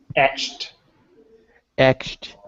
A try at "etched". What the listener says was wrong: That's right. There's no ed. Forget the ed there. There's no ed sound. It's the unvoiced t sound.